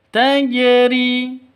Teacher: tajri harus dipantulkan ke huruf jimnya. Karena di sini huruf qalqalahnya jim maka dipantulkan ke jim.